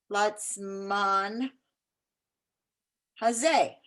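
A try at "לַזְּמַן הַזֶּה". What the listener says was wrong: It says kind of a relaxed z. Lazman hazeh.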